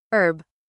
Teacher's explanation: In American English, we say the H sound clearly like herb.